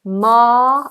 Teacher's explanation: Ma, open vowel, no R sound.